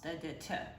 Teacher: alveolar stops because your tongue touches your alveolar ridge when you pronounce them